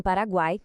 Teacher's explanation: em Paraguai temos o trio perfeito, tudo junto na mesma sílaba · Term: tritongo